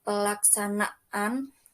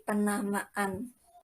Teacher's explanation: Jika diberi sufiks an dalam pelafalannya akan muncul bunyi glotal stop, yang simbolnya seperti tanda tanya atau dalam bahasa Indonesia diwakilkan dengan huruf K.